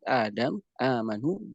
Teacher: hukum-hukum dari mad badal ini disamakan dengan mad tabi'i, dia dibacanya dengan 2 harakat saja